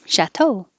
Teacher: the stress is on the second syllable because it's from French